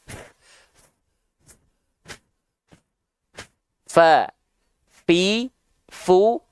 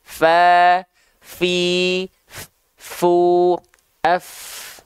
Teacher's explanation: ujung gigi seri atas kita disentuhkan dengan bibir bawah bagian yang dalam yang basahnya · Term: huruf fa